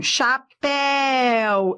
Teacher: Eu tenho aqui ditongo. Ó, decrescente. Eu fui do forte para o fraco. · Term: ditongo decrescente